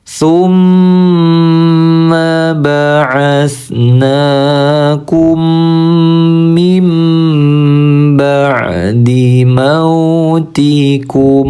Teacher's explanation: Kalau guna musyaddadah artinya kita tahan dulu suaranya 2 ketukan.